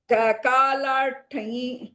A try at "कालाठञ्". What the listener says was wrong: Kalatany. If you're telling thanyi, it is basically you're telling ikara sahitam form. Kalatany. Thanyi. So you have to stop there. Don't tell thanyi. That ni is ikara basically.